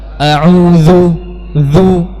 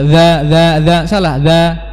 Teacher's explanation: Huruf dzal lebih jelas karena dia sifatnya apa? Jahar.